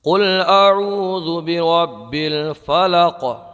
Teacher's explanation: قلقلہ خوب ظاہر ہوگا، آواز پلٹ کے آئے گی۔ تو یہاں پر قلقلہ ہوگا وقف کرنے کی صورت میں۔